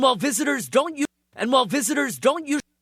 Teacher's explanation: First of all, of course, the N kills the D. N is the strong sound. It kills the D.